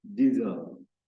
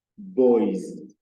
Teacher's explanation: the underlying letter is pronounced Z, diesel. And then the option A as S, where you have letter S, is pronounced as Z, boys.